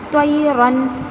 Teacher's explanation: نون کی آواز ظاہر، غنہ نہیں ہو رہا ہے اور لمبا بھی نہیں کرنا ہے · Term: اظہار